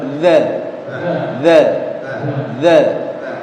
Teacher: Jadi suara dzalnya langsung ngalir, tidak ditahan. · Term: huruf dzal